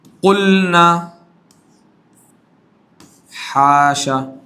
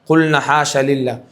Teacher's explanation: جو قلنا ہے اس میں لام ساکن ہے، لام کا ادغام نون میں قریب المخرج ہے، ادغام میں متقاربین ہونا چاہیے لیکن ادغام نہیں ہوگا. دیکھیے کہاں ادغام ہوا، قلنا پورا لام پڑا گیا، اظہار ہو گیا لام تعریف کا. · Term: لام فعل